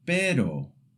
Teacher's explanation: It's a quick flick of the tongue, very light, almost like the t in the English word butter. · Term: short tap R